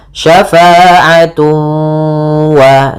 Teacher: ada idgham bi gunnah, cara membacanya ditahan suara wawnya, syafa'atu wa, sambil dimasukkan ke rongga hidung.